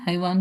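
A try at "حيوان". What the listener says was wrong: हयावान, नुन हैवान, हम तो हैवान कह देते हैं ना, हैवान। में कुरान मजीद में ये लफ्ज आता है हयावान, नुन। वला बशरुन, अब इस पे तनवीन आई है ना, तो बॉ के बाद जो आ रहा है वो भी फॉलो करेगा।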